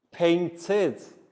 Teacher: we pronounce the e d like id